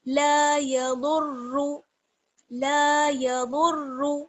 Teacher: آگے ہے لا یضر، لام الف زبر لا، یضر یا زبر یا، ضاد کو را سے ملائیں گے، ضاد را پیش در، یضر را پیش رو، را کو پر پڑھیں گے اور ضاد کو بھی پر پڑھیں گے